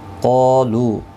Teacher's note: قاف اور الف دونوں پر پڑھے جائیں گے. حروف مستعلیہ میں سے ہے قاف اور اس کے ساتھ میں الف بھی آیا ہے ایک ہی کلمے کے اندر، یہ بھی پر پڑھا جائے گا.